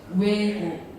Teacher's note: O, E가 연속으로 가시면 돼요